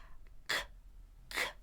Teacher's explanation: see if you can feel the back of your tongue lifting up and stopping the air C on that soft pallet. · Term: stop sound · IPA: /k/